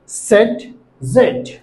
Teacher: আলভেওলার ridge অর্থাৎ দাঁতের গোড়ার একটু আগে যে উঁচু জায়গা আছে, উঁচু জায়গা স্পর্শ করে বলতে হবে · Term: হিসিং সাউন্ড